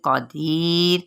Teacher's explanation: दी पे या मद्दा और रा बारीक पढ़ी जाएगी, क़दीर।